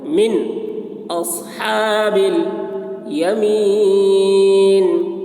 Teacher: نون میں اظہار یعنی جلدی ادا کریں گے نون کو